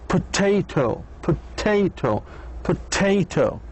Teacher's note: the stress falls in the second syllable